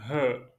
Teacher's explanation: La lettre H c'est une lettre la gorge. Le son vient au fond de la gorge.